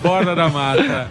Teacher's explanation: fica o R retroflexo, fica bem bonito